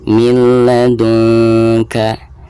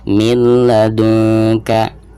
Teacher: memasukkan nun sukun ke huruf lamnya itu hanya dimasukkan saja tanpa ada gunahnya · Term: idgham bila gunah